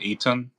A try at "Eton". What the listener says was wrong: Not Ethan. Eton.